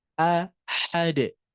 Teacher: Posisinya ada di tengah tenggorokan. Sifatnya lihat, hamas dan rokhwah ya. Maka itu harus mengalir udaranya, harus mengalir pula suaranya.